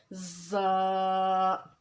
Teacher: ज़ा की मिकदार 2 अलिफ के बराबर क्या है और ज़ा का मखरज क्या है, नोक ज़बान जब ऊपर और नीचे के अगले दोनों दांतों के दरमियान आ जाए, नोक ज़बान जब ऊपर और नीचे के सामने के 2 दांतों के दरमियान जब ज़बान आएगी तो ज़ा को अदा करेंगे, ज़ा में सीटी की आवाज़ पैदा होगी